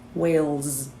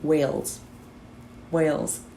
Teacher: that s at the end sounds a little bit like a z wales but not a lot right we have a little bit